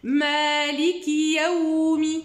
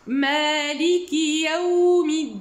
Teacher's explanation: Al-lin, c'est la facilité de prononciation de ces lettres-là. Donc, faites très attention à ce que vous le lisez, ce waw sakin, bien layyin, bien fluide dans la bouche.